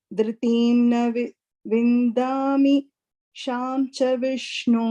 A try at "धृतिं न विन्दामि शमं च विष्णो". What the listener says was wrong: Sham is there.